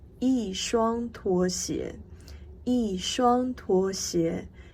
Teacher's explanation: E becomes the fourth tone here